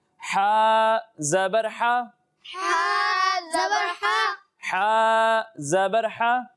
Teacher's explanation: اور ہا کو حلق کے نیچے والے حصے سے پڑھیں گے